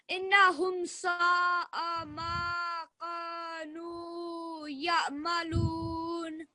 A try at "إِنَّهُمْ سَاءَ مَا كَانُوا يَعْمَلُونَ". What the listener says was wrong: That was almost there. Just put more time on the nun mushaddad. إنهم.